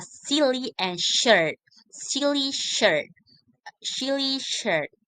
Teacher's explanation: The key difference between these two sounds in their place of articulation as a is a the phoneme as is articulate further forward in the mouth at the alveolar ridge, and sh is articulate further back in the mouth